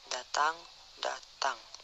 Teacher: Konsonan D, kriteria bunyi apikoalveolar. Konsonan D, bunyi apikoalveolar hambat bersuara